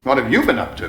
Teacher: I'm stressing you because I'm kind of like returning the same question